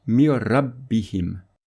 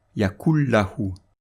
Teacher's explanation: Le nun avec soukoun va disparaître et la lettre lam ou ra va être renforcée par un shadda. Donc dans cet exemple, le premier mot c'est min et le deuxième c'est rabbihim. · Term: l'assimilation sans nasillement